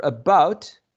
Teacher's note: For about, we have the schwa, and the diphthong au.